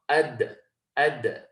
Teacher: You've got the tip of the tongue going behind the teeth. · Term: al-qalqalah